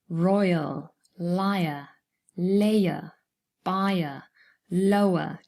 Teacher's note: usually the diphthong forms its own syllable here and the schwa forms a second syllable